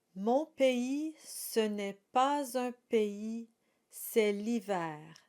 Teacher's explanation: In the classical tradition, the R is rolled on the tip of the tongue. But in these kinds of songs, the singer typically rolls the R in the throat. Both are correct, but I will be reading it with the R's rolled in the throat.